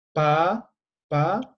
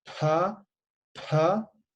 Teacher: tiene que soplar, como la F, ¿no? F, ¿no? Pero más fuerte tiene que soplar. · cuando es aspirada, o sea, al momento de pronunciar tienen que soplar, ¿sí? Soplar.